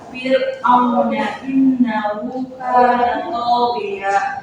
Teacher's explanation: Huruf roh dalam Fir'auna dibaca tipis karena sukun setelah kasroh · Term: rotaki